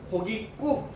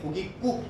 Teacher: 뒷말 국 안 울림 예사소리로 연결됐고 고기 꾹 된 소리로 소리가 나거든요